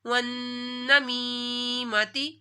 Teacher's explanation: नून में शदद है, नून के ऊपर गुन्ना होगा